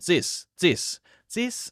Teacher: this often becomes Z